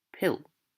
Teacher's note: instead of pillow, they might say pill, omitting the unstressed O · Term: unstressed syllables